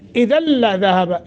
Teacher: इदगाम बग़ैर गुन्ना, इदल्ला लाम मुशद्दद